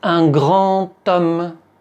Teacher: tu vois dans l'exemple un grand homme, la liaison, on la prononce te. Mais la lettre, c'est un D.